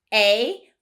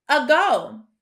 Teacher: when we look at that first syllable it is also open and it should sound like that long a sound a but it actually sounds like a short u uh